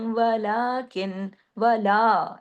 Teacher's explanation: लाम खड़ा जबर ला, अलिफ के बराबर लाम खींचेगा।